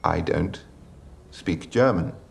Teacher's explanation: that's definitely a feature of conservative RP, is that the vowel sounds are produced at the front of the mouth. Don't. And it's kind of a closed, more of a closed mouth shape than other accents.